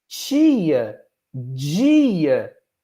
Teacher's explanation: Então, temos aqui um alofone do português brasileiro, tcha e já, como alofones de ta e da. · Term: chiados